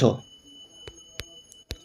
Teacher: तालव्य, महाप्राण, घोष वर्ण का उदाहरण